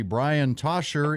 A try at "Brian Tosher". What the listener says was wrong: Brian Tosher. The C is silent, my friend, but that's all right.